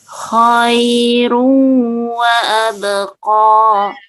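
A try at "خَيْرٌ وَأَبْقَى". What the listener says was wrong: Ru-nya ditahan, kemudian masuk ke hidung. Ru wa abqa. Khairu, nah, tahan masuk hidung. Kha-nya jelas ya.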